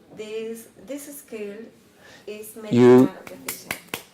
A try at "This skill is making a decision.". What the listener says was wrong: You pause before your S. This skill.